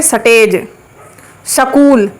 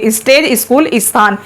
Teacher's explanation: ज्यादातर जो हरियाणा साइड के लोग हैं वे डायरेक्ट ऐसे ही बोलते हैं, वे उसमें ई नहीं लगाते।